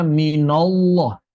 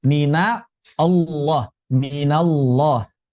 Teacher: maka nunnya jangan dibaca tebal. Tidak dibaca minallah tapi mina Allah.